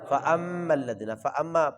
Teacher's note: غنہ کریں گے. کیوں کریں گے؟ میم مشدد ہے.